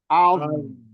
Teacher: Jangan memantul ya, ini bukan qalqalah. Jadi az mengalir, suaranya jalan terus. Az. Nah.